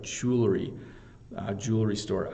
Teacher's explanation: we hardly even say the W like jewelry